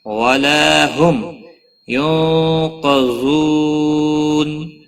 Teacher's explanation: نون ساکن کے بعد حروف اخفا کا قاف آیا، اخفا حقیقی ہوگا، گناہ کے ساتھ پڑھیں گے۔